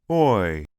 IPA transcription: ɔɪ